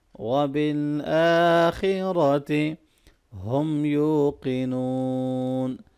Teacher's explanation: کھڑی زبر کو لمبا کریں گے، خا اور را کو موٹا پڑھیں گے،